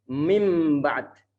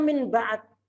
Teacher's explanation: Karena mereka bersebelahan dan makhrajnya itu berdekatan, maka nanti saling pengaruh ini. Suara nun akan berubah menjadi suara m.